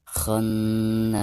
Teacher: Perhatikan ketika kita membaca kha, kena itu ditasdidkan serta didengungkan.